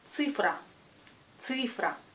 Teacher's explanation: Oui, c'est цифра, цифра. Car la lettre C est toujours dure, la lettre I se prononce U. Цифра, цифра.